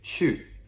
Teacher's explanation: Q-U, fourth descending tone, sharp